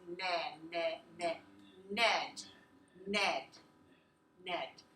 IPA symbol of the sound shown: n